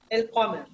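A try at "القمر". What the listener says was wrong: Al. Say, just make the Al pronounced normally. Al. Al Qamar. Don't change anything. The normal Al. Al Qamar.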